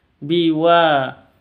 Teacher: WAnya panjang dua harakat karena ada Alif diawali dengan fathah